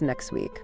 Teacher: sometimes sounds even disappear completely, like the T in next week, which becomes next week.